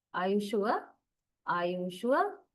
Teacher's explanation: Sure is at the high level. The pitch level is high when you say sure. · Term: falling rising, Falling, rising